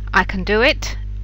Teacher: in the first sentence i can do it the main stress is on the word do and the sound the word can is unstressed i can't do